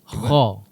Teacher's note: huruf kha merupakan huruf isti'la. Yang mana kita perlu bacakan dia dengan bacaan tebal.